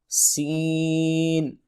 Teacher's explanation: سین کی سیٹی ہے، تین حروف سیٹی کے ساتھ ادا ہوتے ہیں، زا، سین اینڈ صاد